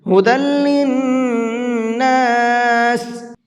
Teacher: نون کے اوپر تشدید ہے تو یہاں پر غنہ کریں گے۔